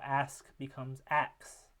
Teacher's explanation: SK sequence being pronounced instead with a KS or an X um sequence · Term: metathesis